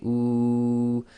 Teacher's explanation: And if you say ooh, you make a round circle with your lips and the back of your tongue will raise. And again, the air is flowing nicely through the oral cavity and the front of your mouth, i.e. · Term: dummah-waaw